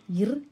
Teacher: மேல்வாயை நாக்கின் நுனி தடவுவதனால் பிறக்கும் எழுத்து